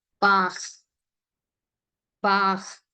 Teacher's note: So that CH, when you are pronouncing as a hard, then the sound should come from your throat. Okay, it is not from your mouth.